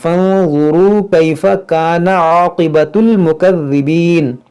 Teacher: دیکھیں فانظروا، یہ ضا ہے، یہاں نون ساکن کے بعد ضا ہے تو یہاں پر اخفا ہوگا، یہاں ضا کو موٹا پڑھیں گے